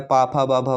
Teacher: पा वर्ग का उच्चारण स्थान ओष्ठ होता है